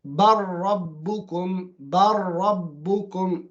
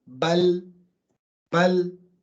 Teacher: When you carry on, the lam is gone. But if you stop there, bal, bal.